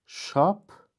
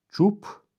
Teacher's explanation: İkinci samit özünün zingiltili qarşılığı ilə əvəz edildi. Yəni, kar zingiltili ilə əvəz edildi.